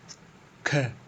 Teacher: स्पर्श व्यंजन कंठ ध्वनि अघोष और महाप्राण ध्वनि है